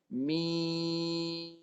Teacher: Mim mati tu rapat bibir, tekan kat hidung.